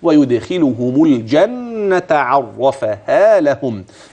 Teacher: لهم اذا ليس معي في هذه الا النون المشدده تغن و الخاء المكسوره وهي مفخمه